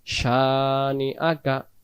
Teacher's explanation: শিনের জবরটাকে আমরা এক আলিফ টান দেব